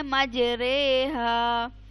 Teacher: یہ پورے قرآن میں واحد حرف ہے جسے مجری ہا نہیں پڑھنا، اسے پڑھنا ہے مجرے ہا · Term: امالہ